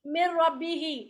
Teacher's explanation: इसमें नून का ना गुन्ना बाकी रह गया ना उसका मखरज बाकी रह गया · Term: कंप्लीट इदगाम